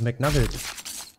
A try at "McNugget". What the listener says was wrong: Das ist doch nicht mit L. Nuggets wird nicht mit L.